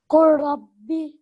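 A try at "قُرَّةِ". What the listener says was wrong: Good, well done.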